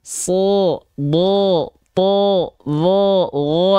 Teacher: Kalau huruf tebal ketika dia berharokat fathah, maka bunyi vokalnya tidak akan condong ke A tapi condong ke vokal O. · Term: huruf yang tebal